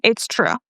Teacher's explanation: It's true, the intonation is going down.